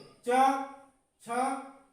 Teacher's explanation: और उसका जो पिछला भाग होता है कंठ के साइड का, यानी ऊपर से अंदर की ओर, उसे कहते हैं तालु। यदि आप बोलेंगे तो इन्हें तालु से बोलते हैं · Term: तालव्य